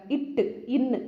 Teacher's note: இட்டு இன்னு அப்படின்னு சொல்லும்போது நாவின் நுனி அன்னத்தின் நுனி கூட மோதுற இடம்